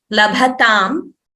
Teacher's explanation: So labhatam, we should say only bha is mahaprana, ta should be alpaprana.